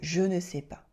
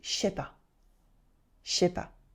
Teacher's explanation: in spoken French, we often cut the ne to make je sais pas